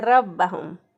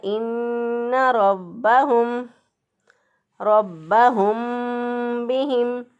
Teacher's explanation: रा को पुर पढ़ेंगे, रा के ऊपर ज़बर होगा तो मोटा पढ़ेंगे, तो बाज़ लोग इसको बारीक पढ़ देते हैं रब्बहुम पढ़ देते हैं रब्बहुम, तो गलत हो जाएगा इन्ना रब्बहुम बिहिम।